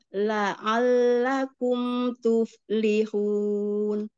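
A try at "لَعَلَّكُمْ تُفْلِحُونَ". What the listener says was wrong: Ya, alhamdulillah bagus. Lanjut.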